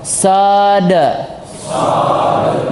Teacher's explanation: Huruf shad ketika dia tidak berharakat maka dipantulkan